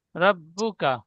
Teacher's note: রব্বুকা কাপে টান হবে না, রব্বুকা।